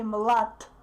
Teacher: I don't pronounce D clearly. I don't pronounce its voice because the following consonant is voiceless. Sh. Therefore, the previous consonant is influenced by the following consonant and becomes voiceless too.